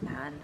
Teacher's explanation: He says man with a weird high vowel that really shouldn't be there. Man. You would just say man.